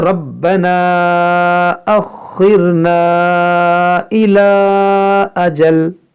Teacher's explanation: اور مد منفصل کو 3 الف کے برابر آپ کھینچ کر پڑھ سکتے ہیں